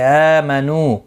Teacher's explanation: الذین، زی یا مدہ ہے، 1 الف کی مقدار کے برابر کھینچ کر پڑھیں گے. آمنو، حمزہ کے اوپر کھڑی زبر ہے، نو واو مدہ ہے، دونوں کو 1 الف کی مقدار کے برابر کھینچ کر پڑھیں گے